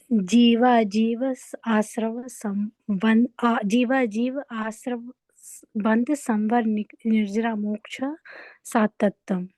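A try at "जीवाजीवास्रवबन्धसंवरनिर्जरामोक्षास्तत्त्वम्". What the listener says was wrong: देखिए, आपके इसमें क्या, आपने वो शब्द बोल दिए हैं, सूत्र में थोड़ी सी गड़बड़ी हुई है। जीवा जीवा है, और ये मोक्ष सात, सात तत्वम नहीं है, मोक्षास तत्वम। 7 इज नॉट द 7 नंबर, ये आप ध्यान रखना।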